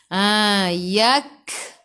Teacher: kaf sifat hurufnya hamas, kena ada sedikit sahaja angin, jangan banyak.